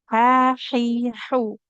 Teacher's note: huruf H-nya ada di tengah tenggorokan kita